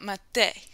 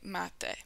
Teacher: when you're talking about mate, you are stressing that first syllable